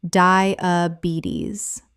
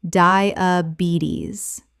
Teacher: The stress is on the third syllable, and the final s makes a z sound.